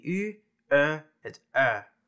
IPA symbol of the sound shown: y ø œ